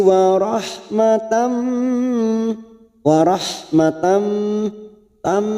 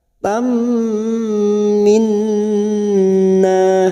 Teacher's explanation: Tak marbuto yang berharokat fathah tanwin masuk ke huruf mim. Tam namanya idgham bi gunnah.